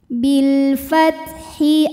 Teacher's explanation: tertahan atau kuat suaranya ayyatiabil kemudian ada alif lam qamariah karena alif lam menghadapi huruf qamariah yaitu huruf Fa maka lam sukun dibaca jelas